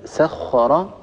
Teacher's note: انتبه لكلمة سخر، الراء مفخمة وهي مفتوحة فهي في أعلى مراتب التفخيم